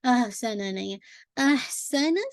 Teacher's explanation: ٹھیک ہے، ہاں نہیں ہے، احسنا نہیں ہے. احسنا سین کو بالکل شارپ رکھیے گا، باریک. احسنا اور وسلنگ ساؤنڈ کو واضح کیجیے گا نا، یعنی سارے ایک کاؤنٹ ہے اور ہاں پہ ہمس کو بھی واضح کیجیے گا، ایئر آپ کی باہر آئے گی.